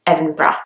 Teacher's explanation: So you can hear the G at the end, g. But in English, you can't hear the G, you can't hear the H, it's just Edinburgh